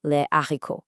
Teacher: you never link before something called an aspiré. That's an H that acts like a consonant, like in les haricots.